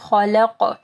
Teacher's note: خا کو ہیوی پڑھنا ہے، قاف کے اوپر قلقلہ کرنا ہے